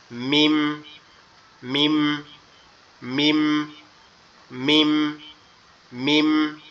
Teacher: মিমটা আমাদের দুই ঠোঁট, এখানে উপরের ঠোঁট, নিচের ঠোঁট, দুই ঠোঁটের এই যে মিডিল অংশটা একসাথে লাগবে, লেগে আওয়াজ হবে মিম, মিম, মিম, মিম, মিম।